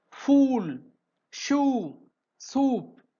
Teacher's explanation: the sound oo is produced with the back of the tongue raised to the closed position towards the soft palate. அந்த ஊ சவுண்ட produce பண்ணும்போது அந்த பேக்ல இருக்கக்கூடிய tongue வந்து என்ன ஆகுதுங்க ரைஸ் ஆகுது.